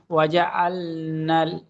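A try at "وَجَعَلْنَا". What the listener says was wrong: ওয়াজা, লাল নাই, নান।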